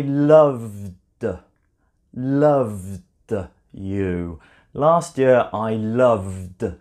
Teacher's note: Last year I loved. You can hear it and feel it. It's coming from your vocal cords. It's a voiced consonant sound.